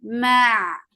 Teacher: Ma, for fat-open jaws, attach it the ain. Ain will get sifa of tawassut. And ain should be from your throat nicely.